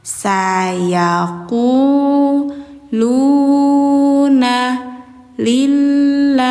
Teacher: karena didahuluinya kasroh, ya. Maka bacanya di tipiskanlah.